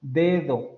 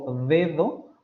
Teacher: ambos fonemas van a ser sonoros ambos fonemas van a ser dentales